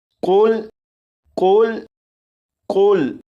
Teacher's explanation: یہاں پر دیکھیں یہ جو لفظ ہے، اس لفظ کے شروع میں قوف ہے، اس قوف کو پور یعنی موٹا پڑھیں گے